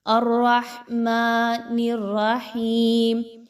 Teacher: الرحمن، را کو موٹا، ہا کو اس کے مخرج سے، میم کھڑا زبر ما، اس کو 2 حرکات کے برابر لمبا کر کے کھینچ کے پڑھیں گے